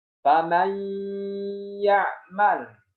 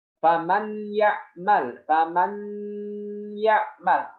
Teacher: Huruf nun itu langsung dimasukkan ke huruf setelahnya, yaitu ya. Ya, diidghamkan. · Langsung masuk ke ya dengan suara gunah dari hidung. Yang salah adalah tidak dimasukkan secara sempurna. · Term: suara sengau dari hidung